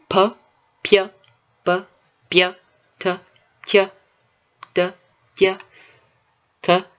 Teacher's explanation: I decided to go with, palatalized versions of all of the plosives.